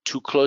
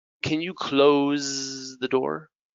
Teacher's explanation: Close is a vibrated S, like a Z